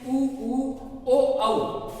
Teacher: इनको जब भी हम बोलकर देखेंगे तो अपने होठों की आकृति गोल सी हो जाती है, इसी कारण इनको वर्ताकार स्वर या वृत्तमुखी स्वर कहा जाता है।